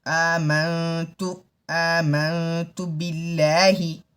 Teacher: اس نون کی آواز کو ناک سے آنا چاہیے